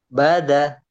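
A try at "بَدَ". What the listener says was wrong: baba, da-nya agak agak agak kayak digigit ya lidahnya. Baza, baza, kemudian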